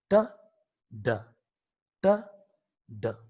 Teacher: The blade of the tongue or the front of the tongue leads towards the alveolar ridge, makes a contact with the alveolar ridge, and the amount of air that comes from the human lungs is being stopped at the closure created by the alveolar ridge and the blade of the tongue or front of the tongue.